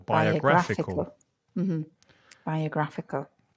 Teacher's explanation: tricky word five syllables biographical stress the third syllable